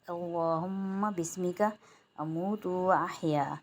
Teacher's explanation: اللہم میں اللہ کا لام موٹا، ہما میں میم مشدد آ رہا ہے 1 الف کی مقدار، غنہ کریں گے۔ بسمک اموت، موتو میں میم واو پیش منہ، یہاں پر 1 الف کی مقدار کھینچیں گے۔